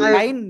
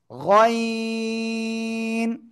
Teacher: কাইন কয়েন গাইন না, এটা গইন, তিন আলিফ টান হবে মোটা আওয়াজে, এই গলার শেষ ভাগ থেকে উচ্চারণ হবে, ঠিক আছে? গইন।